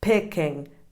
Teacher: Picking has two lax E sounds